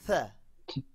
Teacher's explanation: হ্যাঁ হ্যাঁ যখন উচ্চারণ করব জিভটা, our tongue will be come to the middle of the tongue, teeth, দাঁতের মাঝখানে আসবে tongue, জিহ্বাটা মাঝখানে